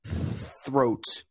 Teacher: In that word, you use the silent TH, the unvoiced. And so because of that, you don't feel the vibration.